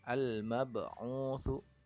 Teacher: huruf Qalqalah nya adalah huruf ba yang berharakat sukun maka kita baca memantul